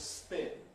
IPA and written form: spɪn (spin)